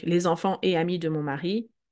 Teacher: pas de liaison après le et, même si c'est ensemble